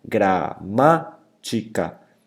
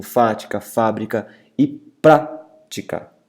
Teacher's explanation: Gramática, repara que se eu dividir silabicamente a palavra gramática, gramática, eu tenho a antepenúltima sílaba mais forte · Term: proparoxítonas